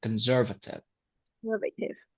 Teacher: Conservative. Okay, stress on the second syllable.